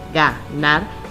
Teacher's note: nos damos cuenta que la sílaba tónica se encuentra en la última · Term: aguda